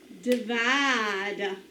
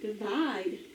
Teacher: It is vowel, consonant, vowel, so we're going to divide after the vowel. Accent is on the second syllable.